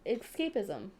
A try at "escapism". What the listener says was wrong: Escapism. Yeah, you said escape.